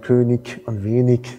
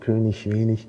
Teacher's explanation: nur nach I, wenn nichts weiter kommt, gibt es halt diese Frikativisierung. Es wird also so ein Frikativ zusammen mit der Auslautverhärtung.